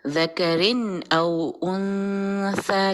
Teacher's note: ذکرن نہیں کہنا یہاں پہ, حمزہ کی وجہ سے یہاں پہ تنوین کا اظہار ہوگا. ذکرن او انثى, لیکن انثى میں پھر جو ہے وہ ایرو میں نے ڈالا ہے جس کی وجہ سے اس کا یہاں پہ آپ نے غنہ کرنا ہے.